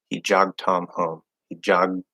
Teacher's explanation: We kind of want to hear that little, that holding or stopping of the D through the nose